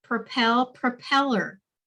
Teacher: the accent on the second syllable stays the same